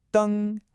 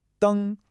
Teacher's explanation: That's a nice high flat tone.